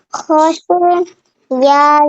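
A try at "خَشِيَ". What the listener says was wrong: یا کو نہیں کھینچنا. خوشیہ.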